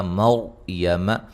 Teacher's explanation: را ساکن سے پہلے زبر، را کو موٹا ادا کریں گے